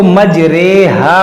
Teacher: यहाँ पर सिर्फ एक कलिमे में इसको री नहीं बल्कि रे पढ़ना है। इसको कहते हैं इमाला वाली रे।